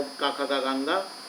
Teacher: जो का वर्ग होते हैं इनका उच्चारण स्थान होता है कंठ।